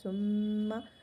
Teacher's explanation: میم اور نون پہ تشدید ہے تو غنہ ہوگا۔ ثم ناک میں آواز کو لے کر جائیں گے، یعنی غنّے کی مقدار ایک الف ہے۔